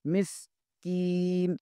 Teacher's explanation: مل، مسکین، میم زیر کو سین کے ساتھ ملائیں گے، اور سین حروف صفیریہ میں سے ہے، اسے سیٹی کی آواز نکلنی چاہیے